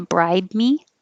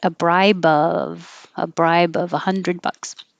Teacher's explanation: And the B, you just close your lips. If the next sound is a consonant, you won't hear it.